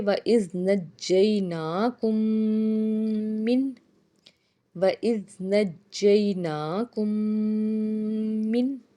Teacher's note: جیم کو ہم 2 بار ادا کریں گے کیونکہ جو تشدید والے حرف ہوتے ہیں وہ 2 بار ادا ہوتے ہیں